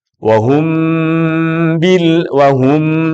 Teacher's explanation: Ba mim bertemu dengan ba itu bacaannya disebut dengan Ikhfa Syafawi maka pasti mim ini akan menjadi keluar hurufnya di hidung